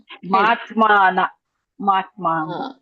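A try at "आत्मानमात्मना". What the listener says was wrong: ಮಾತ್ಮ ಅಂತ ಇದ್ದೀರಾ ನೀವು ಮ ಅನ್ನ ಅಂತ ಇದ್ದೀರಾ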